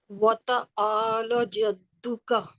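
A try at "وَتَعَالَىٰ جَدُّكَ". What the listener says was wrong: वतआला, ला में प्रॉब्लम है, आपको ला खींचना है। फिर से पढ़िए एक बार।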